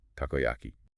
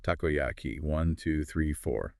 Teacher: But in Japanese, it's four perfectly even beats.